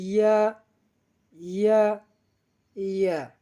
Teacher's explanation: আমরা জিহ্বার মাঝখান থেকে তার বরাবর উপরে তালুর সঙ্গে লাগাইয়া উচ্চারণ করি